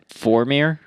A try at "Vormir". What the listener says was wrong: It's a V, Vormir. Vormir.